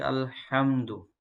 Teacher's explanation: چھوٹی ہا ہے جو کہ حلق کے درمیان والے حصے سے نکلتی ہے، اور اس کی آواز ہا اس طرح ہوگی، تو اس کو پڑھیں گے الحمد۔